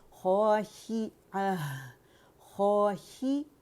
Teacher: خو موٹائی سے ادا ہوگا